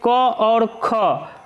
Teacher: क और ख कंठ ध्वनियों के अंतर्गत आती है